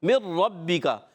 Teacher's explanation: نون را میں ملتا ہے تو بالکل مل جاتا ہے، تو اس کو بھی کہتے ہیں ادغام تام